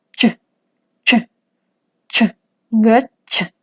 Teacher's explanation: Es un sonido que se tocan la lengua con el paladar y se produce un silencio durante un tiempo, ch, y es en el momento en el que se separan, ch, que se produce el sonido. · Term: africada